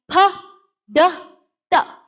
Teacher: sudden rush of air it means it's a stop